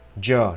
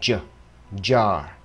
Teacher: Một âm có cấu hình y chang như là ch là j, chỉ khác là dây thanh quản rung, tức là âm vô thanh biến thành âm hữu thanh.